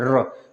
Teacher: जो र है वो ऊपर तो जा रहा है, हमारे मूर्धन्य को छू रहा है, टच कर रहा है, लेकिन पूरी तरीके से नहीं टच कर रहा है। र, गड़गड़ाहट की आवाज आ रही है ना।